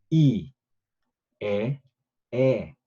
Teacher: 혀가 위쪽으로 올라가고 내려가는 게 느껴지죠